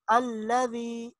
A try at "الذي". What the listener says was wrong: نہیں ابھی بھی آپ کا لام موٹا ہے. الذی.